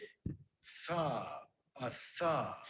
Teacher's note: a th sound is an example, dental fricative.